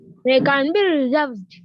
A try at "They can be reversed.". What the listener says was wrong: Reversed. Use the word reverse, not reserved. Say they can be reversed.